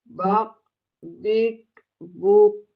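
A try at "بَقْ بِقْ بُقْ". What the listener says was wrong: Mantulnya nggak ada Bu. Bako, bioko, boko. Nah, emang, saya perhatikan teh Ibu itu mantul kayak tidak konsisten ya, Bu, ya, kayak susah ya, Bu, ya? Pokoknya, Bu, ya, ketika ditempelkan ke makhrajnya itu kayak agak kuat. Sehingga ketika dilepas langsung mantul, bako, bako, biko, buko, bako, biko, buko, kayak dilempar, bako.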